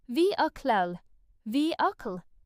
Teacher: Some learners pronounce this as vehicle, making the middle sound too strong. In British English, the most natural pronunciation is vehicle, with the middle syllable very quick and light.